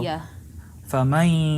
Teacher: Yeah, go from the ma straight to the ya.